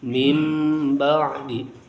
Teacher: iqlab artinya nya mengganti bunyi huruf nun dengan bunyi huruf mim.